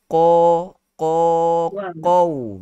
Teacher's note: Dia kena kekalkan huruf qaf yang tebal itu.